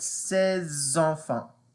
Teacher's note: I put the liaison. The liaison. Because I have a consonant S. And then I have a vowel E. So you need something to make it bridge together.